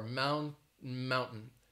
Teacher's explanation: say the t and then you're stopping right before mount mountain it's like your tongue is getting ready to hit the top of your mouth and say that t but then you stop · that is more of a stop T, because it's like you're getting ready to say the T and then you're stopping right before.